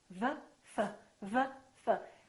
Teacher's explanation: The position of the lips is the same, except one is voiced and one is voiceless. One uses the vocal cords and one doesn't.